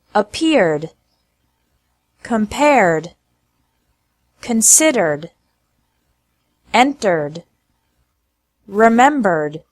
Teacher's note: Ed, pronounced like D, after English verbs ending with R sound. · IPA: /d/